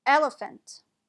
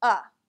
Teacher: in this word the second and third vowels are both pronounced as a schwa